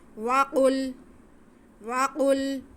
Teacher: قاف حروف مستعلیہ ہے, اسے ہم موٹا کر کے پڑھیں گے